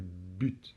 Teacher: au début, on a la bouche fermée. B, et ça explose un petit peu, c'est but, d'accord?